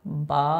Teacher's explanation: এটাকে এক আলিফ পরিমাণ টেনে পড়ব